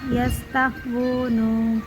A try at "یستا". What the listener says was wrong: جھٹکا نہیں دیں گے یستا یستا نارمل پڑھیں گے یستا